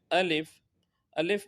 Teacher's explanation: अलिफ मुंह के खाली हिस्से से अदा होता है